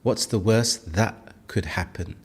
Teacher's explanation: This is where the T sound is replaced by a pause. This is the glottle stop.